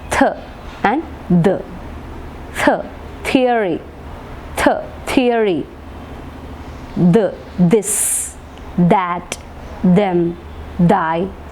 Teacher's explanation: അപ്പോൾ അവിടെ നാവിൻ്റെ തുമ്പ് കൊണ്ട് the tip of the tongue is touching the teeth, and then we produce the sound. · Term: dental sounds